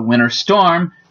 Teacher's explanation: A lot of times when you're talking about a winter storm, the T almost disappears. You can also delete the T or the D when it is in a cluster of consonants, even across word breaks or in the middle of words. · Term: Deletion